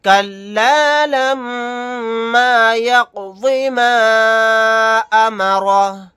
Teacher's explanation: الف مدہ کے بعد حمزہ دوسرے کلیمے میں ہے، یہاں مد منفصل کا قاعدہ ہوگا۔ آیت کرنے کی صورت میں ہا کو ساکن بنا کر پڑھیں گے۔